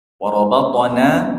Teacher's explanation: na dua harakat panjangnya